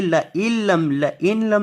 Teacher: حمزہ کو آپ نے نون کے ساتھ نہیں بلکہ لام کے ساتھ ملانا ہے. یہ نون نہیں پڑھا جائے گا، اسے پڑھیں گے لَإِلَّمْ لَإِلَّمْ نہیں لَإِلَّمْ. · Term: ادغام